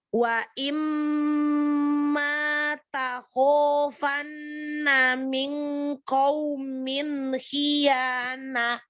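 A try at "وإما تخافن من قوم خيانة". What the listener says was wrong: Ini nafasnya nggak keluar di akhir. Khiyanah. Jadi perhatikan sifat-sifat hurufnya semua ya.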